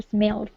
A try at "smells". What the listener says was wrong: Yeah, we're missing the S at the end, so smells. Can you repeat smells?